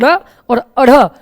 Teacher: अगला तथ्य बच्चों कि चूंकि इनका उच्चारण करते समय जीभ झटके के साथ नीचे आती है, माने पहले जीभ अड़ा और अड़ा बोलने के लिए जीभ को पहले मुंह पर तालू के पास ले जाएंगे और झटके के साथ नीचे लगाएंगे, तब अड़ा और अढ़ा बोलते हैं, तो इसलिए झटके के साथ नीचे आती है, इसलिए इन्हें उत्क्षिप्त व्यंजन भी कहा जाता है।